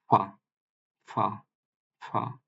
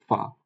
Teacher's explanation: এরপরের লেটারটাকে আমরা বলছি ফা, ফা, ফা। এটা হচ্ছে উপরের পাটির যে সম্মুখ ভাগের দুইটা দাঁত, এইটা নিচের ঠোঁটের ভেজা অংশের সঙ্গে স্পর্শ করবে। ফা, ফা, এভাবে উচ্চারিত হবে ফা, আচ্ছা ফা।